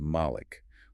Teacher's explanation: In the reading known as halves, it is recited as Malik with a long a sound.